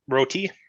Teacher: I hear when you say roti, it sounds roti. You're putting a little bit of a tongue roll into there.